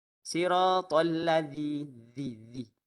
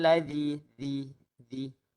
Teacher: keluarkan hujung lidah antara gigi atas dan juga gigi bawah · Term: huruf dal yang ada titik